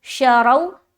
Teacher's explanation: वाव साकिन से पहले ज़बर है, लिहाजा वावलीन का कायदा बनता है, नरमी के साथ जल्द अदा करेंगे